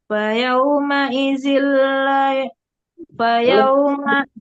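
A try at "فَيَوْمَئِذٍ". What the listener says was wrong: ya zalnya lembutkan lagi. Tadi udah lembut, sekarang keras lagi. Nggak ahad, matikan dalnya. Ya, lanya nggak dipanjangin mau buat lanya panjangnya. Ahad. lembutkan, tapi ada pantulan dalnya ya.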